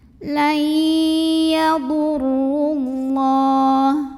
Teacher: Lam pada lafaz Allah atau lam jalalah dibaca secara tafkhim. Kenapa? Karena huruf sebelumnya yang ro berbaris dhammah, maka bacanya tebal.